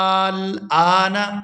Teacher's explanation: یہ مد لازم ہے اور اس کو 6 حرکات کے برابر کھینچ کر ادا کیا جائے گا